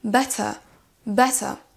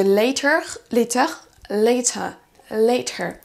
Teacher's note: Le R en fin de mot va complètement disparaître si vous avez un accent britannique. Au lieu de better, vous allez entendre better, better.